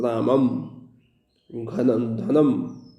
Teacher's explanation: नासिका की सहायता से हम अम का उच्चारण करते हैं, अनुस्वार का उच्चारण करते हैं